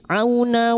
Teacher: fathah bertemu wau sukun kita lunakkan huruf lin